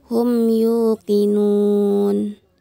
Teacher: Mim sukun bertemu dengan huruf ya. dibaca jelas dan dihukumi izhar syafawi.